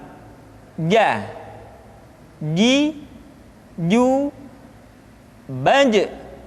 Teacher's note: dikeluarkan dengan menyentuhkan tengah-tengah lidah dengan langit-langit. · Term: huruf ja